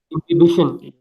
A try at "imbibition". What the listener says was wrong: So imbibition of water. Imbibition of water. You might pronounce it as imbibition. Don't pronounce it as inhibition. Okay, it is imbibition or imbibition, however you pronounce it as.